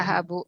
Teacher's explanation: ya, az-zahabu, lamnya tidak terbaca. Az-zahabu. Ya, itu namanya syamsi. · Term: Syamsiyah